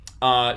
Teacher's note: So I'll show you as well what the aspiration looks like in spectrogram form phal, for Hindi. phal, So this is a voiceless, there's no voicing here, aspirated stop. We get this sort of regular turbulence we expect to see out of an H.